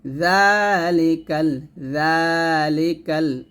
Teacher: সতর্কতা থাকবেন সেটা হচ্ছে আপনার জিহ্বাটা যেন নিচে যাতে না লাগে জিহ্বাটা অবশ্যই সবসময় উপরে দাঁতের আগে লাগিয়ে জাল উচ্চারণ করবেন